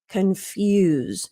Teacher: Now, this one's interesting when you compare confuse. So in this form, the S sounds like a Z